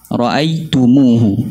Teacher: kita hidupkan dhammah mim dan silahkan dia ra'aitumuhu. Jadi baca panjang 2 harakat.